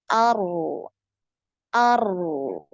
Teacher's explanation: tebal kemudian getarannya sekali kemudian ee ada aliran suara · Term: huruf ro